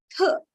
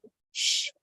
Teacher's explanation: when I say sh, I don't feel any vibration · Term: voiceless